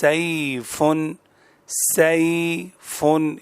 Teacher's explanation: یہ زبان کے وسط، درمیان اور اس کے مقابل اوپر کے تالو سے ادا ہوتے ہیں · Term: یا لین